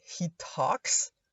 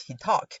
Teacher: the final S at the third person singular is very often removed because this S specifically creates clusters of consonants like he talks.